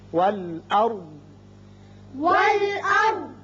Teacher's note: را ہم پر پڑھیں گے اس لیے کہ اس کے پچھلے حرف پر زبر ہے